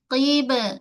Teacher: Qaf balik bawah, gerak rahang ke bawah. Kemudian pada ba kita tahan dulu suara. Qib tu tahan. Kemudian lantun. Sifat. Ba ada qalqalah.